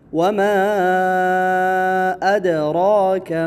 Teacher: مد جائز منفصل ہے، 4 الفی مد